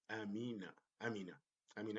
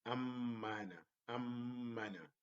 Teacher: as if I am having two M's, but in reality I have one, but the stress on the shadda makes it like two M's